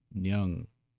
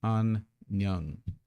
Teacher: notice that the zero consonant at the end of a syllable gets the ng sound